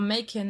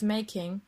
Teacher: the weakening or elision of sounds in words as a whole, as in ya instead of you, or makin instead of making